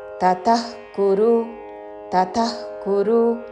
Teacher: విసర్గ తరువాత కాతో పదము మొదలవుతున్నది కాబట్టి నాభి నుండి శ్వాస వదులుతూ చివరిన ఖ లాగా ఉచ్చారణ.